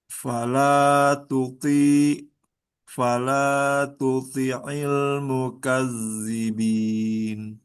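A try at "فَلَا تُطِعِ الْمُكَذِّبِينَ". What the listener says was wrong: Ya, ditambah lagi, ditebalkan. Tuti'il, tuti'il. Ya, nah, tadi yang awal-awal terlalu banyak hamas ya. At, it, ut.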